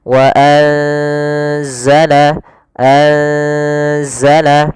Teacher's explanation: Yaitu di sini kita mendapati ada nun yang berharokat sukun atau yang tidak dikasih harokat bertemu setelahnya huruf zai, yang mana zai termasuk salah satu huruf ikhfa. Maka cara membacanya itu kita samarkan nunnya kepada huruf zai. Bukan dibaca wa anzala, tapi juga bukan nggak bisa dimasukkan ke za wazzala, tidak bisa.